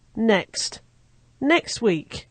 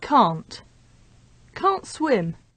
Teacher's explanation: In rapid speech, the t sound at the end of a word often disappears completely if there are consonant sounds on either side of that t sound. In other words, when we have 3 consonant sounds in a row and the one in the middle is t, that t sound will often disappear.